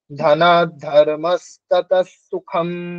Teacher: বিসর্গের উচ্চারণটা দন্তস এর মত হবে পরে যেহেতু দন্তস আছে